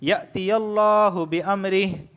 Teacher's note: لفظ اللہ سے پہلے یا پر زبر آیا ہے اس وجہ سے میں لفظ اللہ کو موٹا پڑھ رہا ہوں